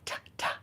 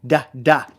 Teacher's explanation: Like if you were to say the word ta, ta, the T noise, ta, ta, and the D noise, da, da, is actually the same exact thing. One is an unvoiced plosive and one is a voiced plosive. And we were to say the T noise or do the T noise, t, t, t, there's no vocal cords engaging behind it. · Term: plosives